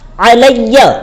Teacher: کے اوپر زبر ہے، اسے پڑھیں گے عین زبر ع، لیکن یا کے اوپر تشدید ہے، اس لیے ہم یا کو ایک مرتبہ پچھلے والے حرف سے ملائیں گے اور ایک مرتبہ خود اس سے پڑھیں گے